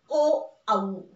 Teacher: दुसरा प्रकार आहे कंठोष्ठ वर्ण. वर्ण हे कंठातून निघतात आणि दोन ओठांचा स्पर्श एकमेकांना होतो, म्हणून तोंडातील दोन भागाचं नाव त्या वर्णांना दिल्या गेलं, एक ओठ आणि एक कंठ.